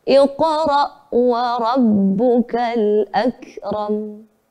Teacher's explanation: Nada yang ketiga turun. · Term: nada turun